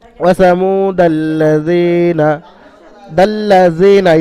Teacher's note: অর্থাৎ তাসদিদ আলা হরফ দুবার উচ্চারণ হয়, দালের সঙ্গে একবার এবং লামের সঙ্গে একবার উচ্চারণ হবে।